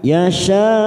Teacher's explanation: Ada mad yang bertemu dengan hamzah dalam satu kalimat. Mad wajib muttasil empat harakat kita panjangkan. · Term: mat wajib mutasil